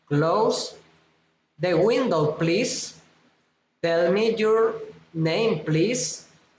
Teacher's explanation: asking for help request Rising intonation